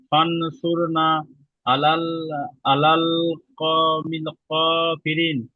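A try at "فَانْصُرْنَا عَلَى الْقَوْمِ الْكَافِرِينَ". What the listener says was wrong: ক, এটা ক না কাফ? ফানসুরনা আলাল কওমিল কাফিরিন।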